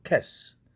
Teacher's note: 그 이유는 바로 스 앞에 있는 cat 할 때 음이 무성음이니까 같은 무성음인 스로 발음하는 것이 훨씬 편할 것입니다. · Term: 무성동화